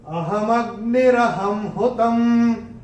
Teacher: और चौथे चरण में ह के ऊपर अनुस्वार के बाद का अक्षर है ह, और अनुस्वार के बाद जब ह आएगा तो अनुस्वार का उच्चारण होगा म।